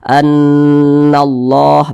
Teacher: Ini kalimat Allah di belakangnya memiliki tanda baca fathah, maka kalimat Allah ini dibaca tebal